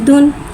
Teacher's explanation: दाल के ऊपर 2 पेश की तनवीन है, 2 पेश की तनवीन को होठों की गुलाई के साथ अदा करके पढ़ेंगे